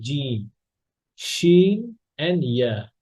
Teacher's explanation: জিহ্বার মধ্যখান থেকে জিম, শিন এবং ইয়া, এই 3টে হরফ একসাথে উচ্চারণ হয়। হ্যাঁ, এই 3টে হরফ জিহ্বার মাঝখান থেকে উচ্চারণ, জিহ্বার মধ্যখান থেকে উচ্চারণ হয়। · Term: জিমের মাখরাজ